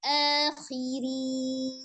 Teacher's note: Din tipiskan ya, ro kasroh